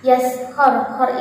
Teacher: Yaskhar, khar ini adalah ra-nya ra tafkhim yang jelas, yang tebal